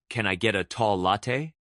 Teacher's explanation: Rising intonation at the end of requests like, Can I get a tall latte? signals politeness.